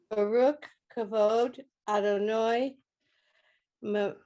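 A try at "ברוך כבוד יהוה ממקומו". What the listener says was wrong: Exactly.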